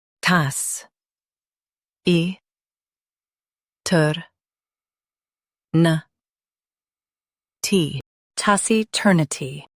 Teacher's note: Emphasize ter and keep nuh soft.